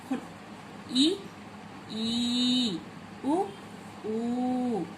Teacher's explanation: Number 1, समृद्ध स्वर, जिनका उच्चारण में मुंह बहुत कम खुला है। हम इन सभी को उच्चारण करते समय हमारा मुंह बहुत कम खुला है।